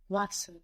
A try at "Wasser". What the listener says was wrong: Wasser. Very good.